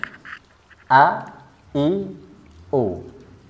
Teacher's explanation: Hamzah ini berada di tenggorokan yang paling bawah atau aqsal halqi dia berada di pita suara jadi pita suaranya terbuka ketika dia berharakat a i u coba